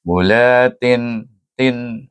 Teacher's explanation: tin bunyi jangan panjang dan jangan dengung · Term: izhar